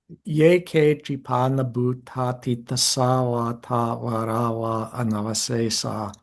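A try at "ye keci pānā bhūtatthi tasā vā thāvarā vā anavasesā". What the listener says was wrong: Okay, the tsa. That was actually pronounced slightly shorter, almost compressed into nothing.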